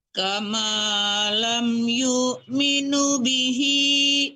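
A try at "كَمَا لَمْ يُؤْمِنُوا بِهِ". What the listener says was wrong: Nunya panjang. Yu'minu panjang.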